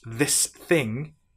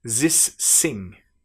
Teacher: a French person who's learning English might pronounce this thing as this sing.